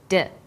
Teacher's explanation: you can feel your tongue against your tooth Ridge